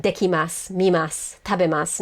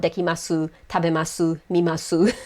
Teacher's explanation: most Japanese speakers omit the u sound. So it's going to be like dekimasu, mimasu, tabemasu, not dekimasu, tabemasu, mimasu.